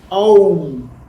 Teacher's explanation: आ से शुरू करते हैं, माँ में फिनिश करना है, बट एक ब्रेथ में बोलना है ओम।